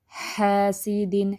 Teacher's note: ہا 2 time long بھی ہو جائے گا نا، زبر کے بعد خالی الف آ گیا